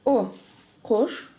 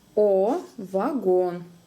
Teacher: Сравниваем О, А. Дальше короткая буква О, и длинная обычная русская О